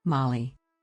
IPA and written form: ˈmɑːli (Mali)